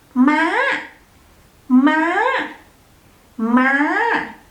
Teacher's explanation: It has high tone, so you have to pronounce it like up to the roof.